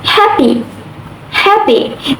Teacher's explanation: in the word happy, happy, the first syllable is stressed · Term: word stress